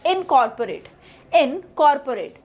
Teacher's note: So COR is the primary sound. The next is O has the reduced sound, so the word pronunciation is incorporate.